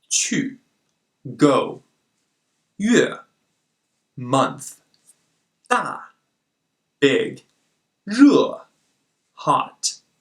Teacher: this fourth tone requires confidence to drop fast and low enough